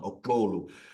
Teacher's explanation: It's a click at the back of your tongue